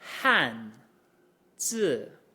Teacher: My voice started at the top, more or less, of my register and fell pretty much to the bottom of it.